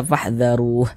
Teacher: Ini kita membaca Al-Quran kemudian kita berhenti atau berwaqaf tepat di huruf H. Huruf H ini tidak dibaca panjang, makanya kita sukunkan sehingga dibaca fahdharuh. Tidak dibaca fahdharuhu, tidak, tapi dibaca fahdharuh.